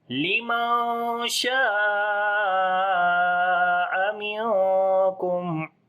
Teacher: نون ساکن کے بعد شین ہے، اخفا کریں گے، باریک اخفا ہوگا، شین کو لمبا کریں گے. یہاں پر الف مدہ ہے یعنی کہ اور بڑی مد بھی ہے، مد متصل ہے، 3 سے 4 الف کے برابر لمبا کریں گے.